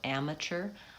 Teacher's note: It's vowel a at the beginning, and that syllable is stressed, so it's long.